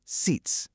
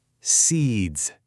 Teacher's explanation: Listen for that sharp voiceless ending.